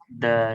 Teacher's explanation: Huruf dal oleh sebab makhraj dia dengan gusi atas, dia disebut macam orang pelat sikit.